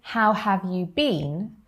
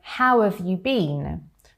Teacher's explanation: how and have contract to make how've, and it's a lot faster, it's a lot more natural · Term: contractions